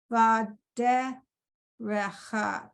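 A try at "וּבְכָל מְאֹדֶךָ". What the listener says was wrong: There's no ha at the end. It's just vadeh.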